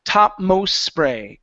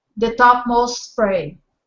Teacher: because we have an S or a consonant and then a consonant on the other side of the T we are going to drop the T